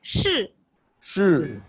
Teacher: Yeah, it's the 4th tone.